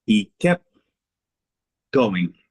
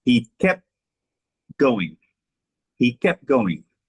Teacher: you cannot hear the T in my speech